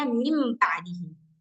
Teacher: Contoh, misalkan ada nun ketemu ba, jadinya mim ba'dihi. Hilang, udah nggak ada lagi kan kedengaran suara nunnya.